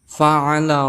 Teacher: Fa Ini termasuk huruf hams maka kita cara membacanya adakan nafas atau angin yang keluar